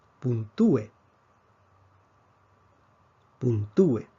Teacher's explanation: Vemos que la fuerza cae sobre la vocal cerrada. Entonces, UE, en este caso, no forma un diptongo, es un hiato.